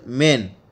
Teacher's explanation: The initial sound in the word men is produced by keeping the lips shut and allowing the air to escape through the nose.